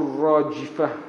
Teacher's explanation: Kita sering mengeluarkan angin dari huruf jim. Sebenarnya tidak ada angin